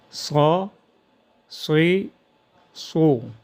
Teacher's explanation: خوب پر ادا ہو استعلاء اور اطباق کی وجہ سے